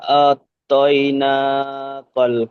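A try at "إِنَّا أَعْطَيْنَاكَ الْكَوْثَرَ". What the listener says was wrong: হ্যাঁ, এখানে আতাইনা হচ্ছে, এখানে আতাইনা হলে সিম্পল হয়ে যাচ্ছে, এখানে হামজা আইন জাবার আ, আ, আত নয়, আ।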